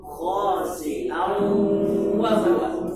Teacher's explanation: Padahal di sini sudah pertemuan antara nun dan waw, alihkan ke suara hidung. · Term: suara sengau